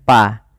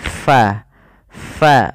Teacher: huruf Fa itu harus dialirkan nafasnya karena dia Fa memiliki Salah satu sifat yaitu sifat Hames